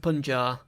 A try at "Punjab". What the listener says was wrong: Punjab. No, Punjab. There's a B in it. Pronounce the B.